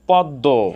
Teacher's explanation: দ এর সাথে মফলা যুক্ত হওয়ার কারণে সামান্য নাসিক্য হয়েছে।